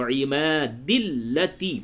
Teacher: آیت نمبر 7، ارم ذات العماد، حمزہ زر ای، را زبر را، میم زبر ما، ارم، ذال الف زبر ذا، تا لام زر تل، ذاتل، عین زر عی، میم الف زبر ما، عما، دال زر دی، عمادی، حالت وقف میں عماد، ارم ذات العماد۔ اب اگر یہاں پہ آپ وقف نہیں کرتے بلکہ وصل کرتے ہیں تو دال کو لام سے ملا دیں گے